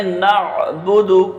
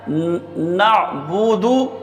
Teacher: با پر پیش ہے تو با کو بھی نہیں کھینچنا ہے اور دال پر پیش ہے تو دال کو بھی بغیر کھینچے پڑھنا ہے